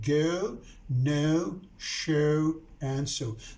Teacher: These diphthongs end in oo